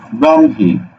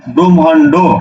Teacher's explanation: হ যুক্ত বর্ণগুলো পরের বর্ণটা আগে উচ্চারণ হয় তারপরে উচ্চারণ হয় হ